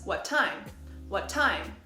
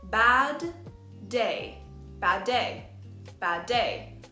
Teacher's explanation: we link the last T sound at the end of what with the first T sound at the beginning of time so it becomes what time what time we only need one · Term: linking